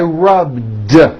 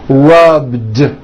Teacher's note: All I did was add a voiced D sound at the end. Rubbed. It's not rubbed with an unvoiced T.